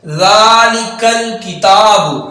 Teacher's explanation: لام کو لمبا کریں گے کیونکہ الف ہے اور الف حرف مدہ ہے